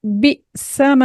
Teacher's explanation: क्योंकि अलिफ खाली से पहले ज़बर है तो हमें यहां पर हरकतैन मिकदार इसको एक अलिफ के बराबर हमें इसको खींच के पढ़ना है